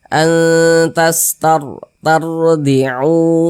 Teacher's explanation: Huruf ro-nya dibaca tebal juga, dibaca tabkhim. Maka pangkal lisan kita naik terangkat ke atas, huruf ro-nya kita tebalkan.